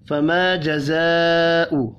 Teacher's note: بڑی مد کو 5 الف کے برابر کھینچ کر پڑھنا ہے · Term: الف مدہ